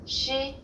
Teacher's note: It sounds like the sh in English only with flatter lips. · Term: consonant